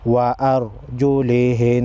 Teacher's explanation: را سے پہلے والے حرف پر زبر ہے، را کو موٹا پڑھیں گے